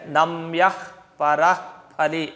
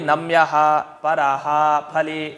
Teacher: ಕ ವರ್ಗ ಅಥವಾ ಪ ವರ್ಗ ಮುಂದಿದ್ರೆ ಅರ್ಧ ವಿಸರ್ಗದಂತೆ ಹೇಳಬೇಕು ಅರ್ಧ ವಿಸರ್ಗ ಕೇಳೋ ತರ ಈಗ ಅರ್ಧ ವಿಸರ್ಗ ಅಂದ್ರೆ ರಾಮಃ ಅಹ್ ಅಂತ